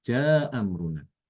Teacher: Imam Al-Bazzi untuk yang fathah itu dengan menghilangkan hamzah pertama. Menghilangkan hamzah pertama.